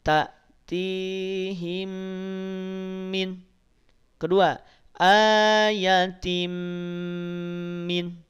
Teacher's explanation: Mim sukun bertemu dengan mim. Tanwin kasrah bertemu dengan mim. Dua-duanya didengungkan.